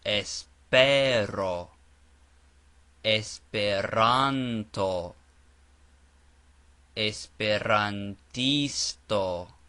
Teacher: the accent or stress is always placed on the syllable before the last